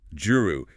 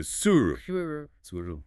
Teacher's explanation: The J gets sharpened into a TS.